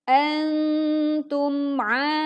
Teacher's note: mim sukun kita baca dengan jelas tanpa memantulkan suara mim sukunnya